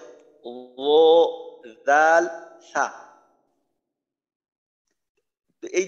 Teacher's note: জিহ্বার আগা সামনের উপরের দুই দাঁতের আগার সঙ্গে লাগাইয়া উচ্চারিত হয়